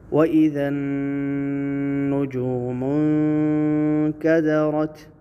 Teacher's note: نون مشدد ہے، نجوم کی غنہ ہوگا، اور آگے اس نون ساکن پہ اخفا ہوگا، یعنی غنہ کے ساتھ پڑھیں گے